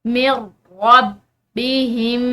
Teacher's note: یہ جو نون ہے، نون ساکن، اس کی آواز بالکل ختم ہو جائے گی اور میم کو را کے ساتھ ملا کر پڑھا جائے گا۔ من ربہم، آگے وقف جائز کی علامت ہے، آگے دیکھیے۔